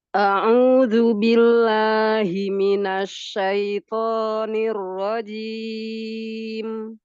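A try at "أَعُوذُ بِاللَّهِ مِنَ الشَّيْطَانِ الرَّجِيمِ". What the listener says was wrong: Huruf to, kuatkan lagi. A'udzu billahi minasy syaithanir rajim.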